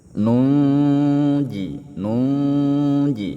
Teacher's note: Nunnya dibaca dengung, dibaca ikhfa samar-samar disertai dengan dengung.